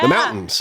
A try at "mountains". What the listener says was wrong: There's a T in there, guy. Where's the T?